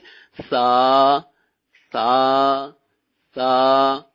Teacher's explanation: ہم اس کو بغیر سیٹی نکالے نرمی کے ساتھ سا پڑھیں گے · سا سا سا, نرمی کے ساتھ. زبان کا سرا اور سامنے والے جو دو دانت ہیں ان کا اندرونی کنارہ